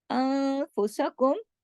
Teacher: ज़लमतुम, ज़ा मोटा। अनफुसकुम, नून साकिन के बाद फा है, इख्फा हकीकी, गुन्ना कामिला।